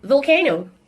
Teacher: This is a voiced sound. It's a labial dental sound, and it's a fricative sound.